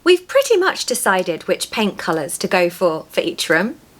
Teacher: pronounce those T's in pretty to give yourself a really British accent